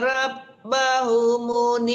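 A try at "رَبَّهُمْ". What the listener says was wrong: kenapa ma lagi yang dipanjangkan?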